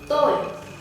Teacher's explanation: it is a level tone. The sound is quite flat.